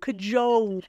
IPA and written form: kəˈʤoʊl (cajole)